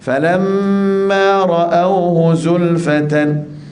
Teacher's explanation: Falamma ra'awhu tak boleh, falamma ra'awhu, ra'awhu tak boleh dilembut, ra'awhu tebalkan ra